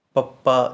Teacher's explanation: ਜਦੋਂ ਪੱਪਾ ਬੋਲਦੇ ਹਾਂ ਦੇਖੋ ਮੂੰਹ ਜਿਹੜੇ ਆਪਣੇ ਬੁੱਲ੍ਹ ਨੇ ਇਹ ਜੁੜ ਜਾਂਦੇ ਹਨ ਆਪਸ ਦੇ ਵਿੱਚ